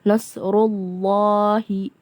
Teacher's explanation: karena huruf sebelum nama Allah berharakat dhammah, maka dibacanya tebal.